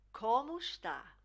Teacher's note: Slightly nasal in the como as well.